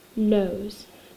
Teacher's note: because our oh it's voiced our s is gonna be voiced so it sounds a little more like a Z